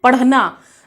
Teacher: तो हमारी ये जो जीभ है वह हमारी मूर्धा से लगकर झटके के साथ नीचे गिरती है या झटके के साथ नीचे फेंक दी जाती है। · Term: उत्क्षिप्त व्यंजन